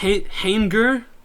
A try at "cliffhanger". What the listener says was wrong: It's not hang. It's not. You're pronouncing the N too much. It's hanger. Hang. It's not hanging. don't